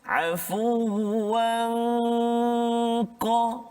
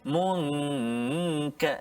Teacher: Jadi dengung dia tu dibunyi seolah tebal sikit bunyi dia, sebab huruf qaf isti'la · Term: ikhfa hakiki